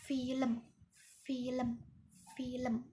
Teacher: Nah, ini merupakan bunyi geser. Bunyi geser atau biasa disebut dengan frikatif yang tak bersuara